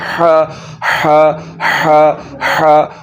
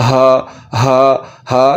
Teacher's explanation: इस हा को पढ़ते हुए आपने हलक के दरमियान वाले हिस्से से आवाज़ को निकालना है और उसको पढ़ना है हा हा हा हा।